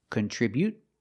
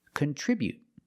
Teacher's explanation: Just stop the air with the tongue and don't release the T.